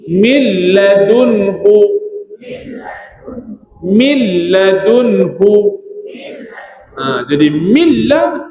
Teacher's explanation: masuk nun pada lam tapi tak dengung